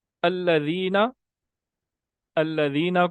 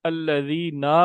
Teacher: نون کو تھوڑا سا لمبا کر دیا تو گویا آپ نے نون کے آگے الف کا اضافہ کر دیا ہے، تو یہ ایک الگ لفظ بن گیا، بلکہ الذینا کوئی لفظ ہوتا ہی نہیں ہے، یہ غلط لفظ ہم نے پڑھ دیا۔